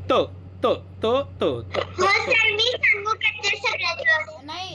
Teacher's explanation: हां, दाताचा त त त त दंत्य व्यंजन म्हणतात. दाताचा आणि जिभेचा उच्चार होतो